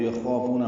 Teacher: یخافون خا پر پڑھیں گے، الف مدہ ہے، 2 حرکات لمبا ہے. فو وہ مدہ ہے، 2 حرکات لمبا ہے.